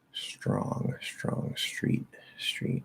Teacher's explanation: i'm pretty sure it's str being pronounced as shtr · some americans pronounce st as sht